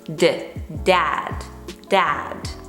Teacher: The position of your tongue, the tongue is touching your upper palate, right behind your teeth, and that's how you produce that firm voiced D sound. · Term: classic d